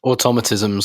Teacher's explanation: stress on the second syllable, personally